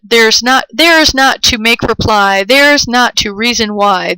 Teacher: it has two stressed syllables and each stress syllable is followed by two unstressed syllables · the stress is on the first beat of each metrical unit and then falls off for the rest of the line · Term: falling rhythm